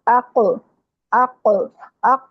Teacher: آپ کی زبان بالکل نرم تالو کے اوپر جا کے لگتی ہے، زبان کی جڑ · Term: قاف